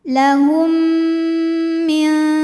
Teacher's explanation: Karena mim sukun menghadapi huruf mim, maka mim pertama dileburkan ke mim kedua disertai bunyi dengung. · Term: idgham mimi